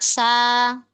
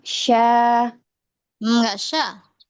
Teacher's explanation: Kemudian sifat safir, ketajaman, ada desis.